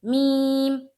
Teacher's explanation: اب ہم لوگ پڑھیں گے میم کا مخرج۔ میم کا مخرج ہے دونوں ہونٹوں کا خشک والا حصہ۔ ٹھیک ہے، ملائیں گے میم، اس طرح سے میم۔